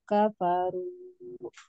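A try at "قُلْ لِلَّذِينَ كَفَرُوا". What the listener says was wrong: hati-hati zinya terlalu panjang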